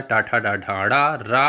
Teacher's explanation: इनका उच्चारण स्थान मूर्धा होता है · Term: मूर्धन्य वर्ण